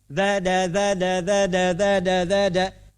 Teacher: dal itu harful infijar, perlu ada tenaga dari dalam.